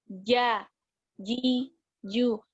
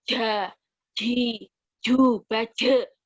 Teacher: jahar dengan syiddah, itu otomatis kita harus nahan, benar-benar harus nahan nafas dan nahan suara